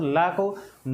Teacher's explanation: देखिए दंत है, लेकिन अब हम लोग बोलते हैं तो ना को बोलिए तो लगभग आपका जीव जो है मसूड़े पर जाता है